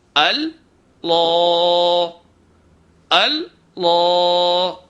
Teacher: تو ایک بات یہ ہے کہ لفظ اللہ کے الف کو بھاری نہیں کرنا ہے، لام کو بھاری کرنا ہے. لام کے اوپر آواز کو ٹھہرانا نہیں ہے، ایک دم ادا کرنا ہے، شدت سے ادا کرنا ہے، الف کے برابر کھینچنا ہے، غنہ یہاں نہیں کرنا ہے، زبان میں لرزش نہیں لانی ہے.